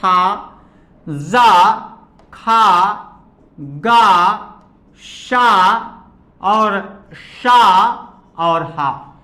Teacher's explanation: हवा की रगड़ के कारण इन्हें संघर्षी कहते हैं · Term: संघर्षी व्यंजन